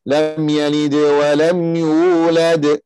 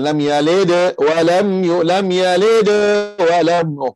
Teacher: Sebab sini di tengah bacaan tu tak ada berhenti. Kita mengkecilkan lantunan dal tu. Ataupun qalqalah tu. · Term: Qalqalah sughra